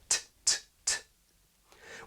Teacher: in SSB t is typically affricated, in other words pronounced with a little s-type release, tˢ tˢ tˢ .